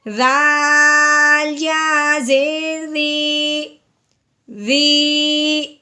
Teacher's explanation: یا ساکن سے پہلے زیر آ جائے تو اسے ہم نے ایک الف کے برابر لمبا کرنا ہے